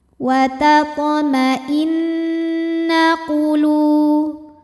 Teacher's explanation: Huruf nun dihukumi dengan gunnah musyaddadah atau wajibul gunnah atau nun musyaddadah, sebab nunnya bertasydid. Cara bacanya, nun didengungkan, tahan dengungannya kurang lebih 2 harokat.